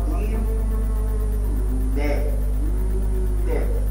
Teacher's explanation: نون مفتوحه وحرف مرقق وحرف من حروف الغنه. طب يخرج هواء من الانف او الخنشور عند النطق بها، يكون هذا الهواء سببا استماع جرس في الأذن، استماع رخيم أو رقيق أو جميل، يستحب أن تذهب تسمع برقم وهكذا برقم.